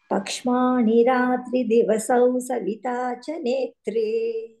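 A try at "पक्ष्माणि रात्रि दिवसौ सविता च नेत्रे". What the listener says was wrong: అంతే, బాగుంది.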